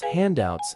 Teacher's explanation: with the emphasis on the first syllable, hand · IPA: /ˈhændaʊts/